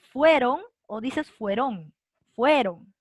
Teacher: la fuerza de voz está aquí en la penúltima